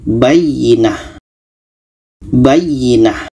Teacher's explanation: Kalau berhenti menjadi huruf H yang berbaris mati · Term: tamarbutah